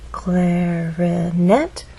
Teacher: we only have one syllable to make our voice glide up clarinet has three syllables clarinet but it's the final syllable that is stressed